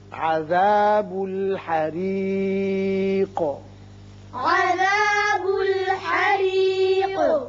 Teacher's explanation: یہ را باریک ہوگا اس لیے کہ نیچے کسرہ ہے اور قاف ساکن کر رہے ہیں، لہذا اس کی صفت قلقلہ ادا کریں گے.